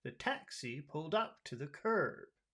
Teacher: can you hear the big small big small big small pulse of the sentence?